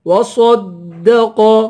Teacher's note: صاد کو پر پڑھیں گے اور قاف کو بھی پر پڑھیں گے